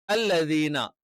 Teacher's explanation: അല്ലദീന നാവിന്റെ അറ്റം മേലെ മുൻപല്ലിന്റെ അടിഭാഗത്ത് ടച്ച് ചെയ്യുന്നുണ്ടോ അല്ലെങ്കിൽ അവിടെ തൊടുന്നുണ്ടോ എന്ന് നോക്കിയാൽ മതി.